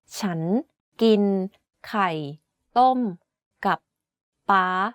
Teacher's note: The word ฉ ั น is pronounced first at a lower pitch then ascends. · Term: rising tone